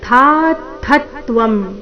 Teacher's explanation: ಥ ದೀರ್ಘ ಬಂದು ನಂತರ ಆಘಾತ ಥ ಮೇಲೆ ಸಹ ಆಘಾತ ಮುಂದೆ ತ್ವ ಸಂಯುಕ್ತ ಅಕ್ಷರ ಬಂದ ಕಾರಣ